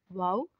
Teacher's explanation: वाव दोनों होठों की गुलाई से अदा होता है